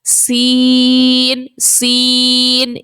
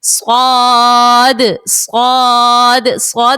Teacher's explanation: زا اور سین یہ دونوں باریک پڑھے جائیں گے، اور صاد جو ہے یہ موٹا پڑھا جائے گا